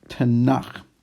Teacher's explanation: And then finally, the K, a K when it's at the end of a word is really more of like a KH sound. That's why the H is there.